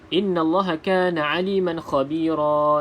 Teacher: Nun yang bersabdu wajibul gunnah, wajib dengung 2 harakat.